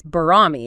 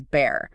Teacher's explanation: In old Indo-Aryan, you know, Sanskrit, it's barami. It keeps that BH, but in English, it becomes bare. That initial BH shifts to a B. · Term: Grim's law